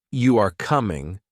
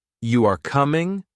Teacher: if you say, You are coming, with a flat tone, it is a statement. But if you say, You are coming, with a rising tone, it is a question. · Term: intonation